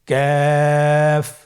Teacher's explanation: কাফের মাখরাজ হলো জিহ্বার গোড়া থেকে একটু আগে বাড়িয়ে তার বরাবর উপরে তালের সঙ্গে লাগিয়ে উচ্চারিত হয়। · কাফ উচ্চারণের ক্ষেত্রে অবশ্যই পাতলা করে উচ্চারণ করতে হবে এবং 3 আলিফ টেনে পড়তে হবে।